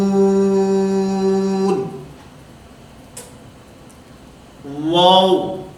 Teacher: اس واو کی ادائیگی میں کیونکہ ہونٹوں کو دخل ہے، ہونٹ گول ہوں گے تو یہ واو ادا ہوگا